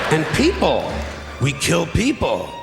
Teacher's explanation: But instead, he breaks his final point into 2 sentences. The pitch of his voice goes up each time, and he takes a couple big pauses.